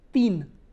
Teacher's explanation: But when I say teen, my tip of the tongue will not come out. You have to block with your frontal teeth.